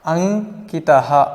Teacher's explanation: ಅನುಸ್ವಾರದ ಬದಲು ಅನುನಾಸಿಕ ವರ್ಣ ङ ಆದೇಶವಾಗಿ ಬರ್ತದೆ, ಪಂಚಮ ವರ್ಣ.